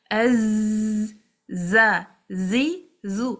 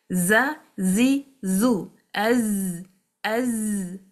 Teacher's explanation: This buzzing is actually safir. It's called safir whistling.